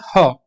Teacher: ह जो होती है ग्लॉटल, ग्लॉटल कहते हैं जब वो जो गले से आवाज निकल के आती है, राइट, गले से यानी वोकल फोल्ड से निकल के आती है आवाज, उसको हम ग्लॉटल साउंड बोलते हैं। ह, इसमें आपकी टंग का कोई योगदान नहीं होता, ये केवल गले से निकल के आती है। ठीक है, तो ये आपके 9 फ्रिकेटिव्स कहलाते हैं।